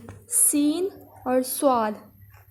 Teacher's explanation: زبان کی نوک جب اوپر کے اور نیچے کے دانتوں کے درمیان آ جائے، سین اور صاد، یہ اوپر والا اور نیچے والا جب دانتوں کے درمیان زبان کی نوک آئے گی تو سیٹی والی آواز پیدا ہوگی